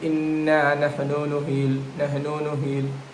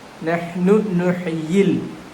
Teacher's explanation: There is no madul asli after the noon.